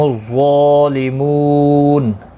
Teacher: ظا مستعلیہ ہے، پر پڑھا جائے گا، اس کے اوپر کھڑی زبر بھی ہے، ایک الف کی مقدار کے برابر کھینچ کر پڑھیں گے. منہ واو مدہ ہے، ایک الف کی مقدار کے برابر کھینچ کر پڑھیں گے.